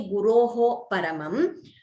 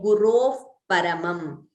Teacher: We do not pronounce the Visarga completely. We say Gurov Paramam. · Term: Upadhmaniya